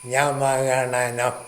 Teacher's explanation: ഇനി അനുനാസികങ്ങളുണ്ട്. ഞാമാഗണന ഇവ മൂക്കിൻ്റെ സഹായത്തോടുകൂടിയേ ഉച്ചരിക്കാവുള്ളൂ